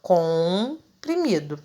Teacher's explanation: O meu M não tem som aí. Quem tem o som é o O, que fica nasalizado. Então, vai aparecer o meu O com um tio em cima.